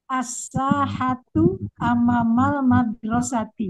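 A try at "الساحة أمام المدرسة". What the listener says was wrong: Panjangnya jangan amama, jangan amama gitu.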